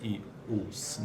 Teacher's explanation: Contudo, ambas as vogais altas, I, U, são não arredondadas.